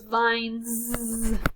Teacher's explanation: So vine, feel your throat, vine, I feel my throat moving, So it's vines, has a z sound.